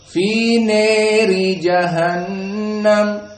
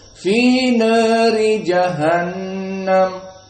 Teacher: Maka di sini qiraah yang telah lalu al-Kisai dengan al-imalah al-kubra fi nari jahannam, maka di sini qiraah Wars hanya taklil bimakna al-imalah as-sughra